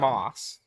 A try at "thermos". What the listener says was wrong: Well, you say it like thermos, like moss, like the stuff that grows that's green. That has two S's. You have to shorten the S sound. Thermos.